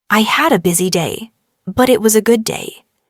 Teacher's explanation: Notice how your voice rises slightly at busy day and falls softly at good day. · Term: intonation